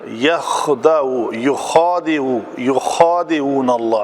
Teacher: खा की जो रगड़ है ना वो बाकायदा सुनाई देती है